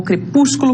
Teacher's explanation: E a antepenúltima é a sílaba tônica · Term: palavras esdrújulas